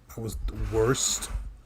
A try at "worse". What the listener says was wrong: You were worse. You were worse. The T is silent. I said worse.